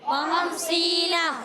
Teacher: سینہ میں سین کو ادا کریں گے، سی، سی، سین یا زیر، سی یا مدہ ہے، ایک الف کھینچنا ہے۔ خمسینہ، کیا پڑھیں گے؟